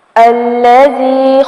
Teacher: زال کو نرمی سے پڑھیں گے اور تھوڑا سا کھینچیں گے کیونکہ زال پر مد اصلی ہو رہی ہے. یا ساکن سے پہلے زال کے نیچے زیر آ رہی ہے.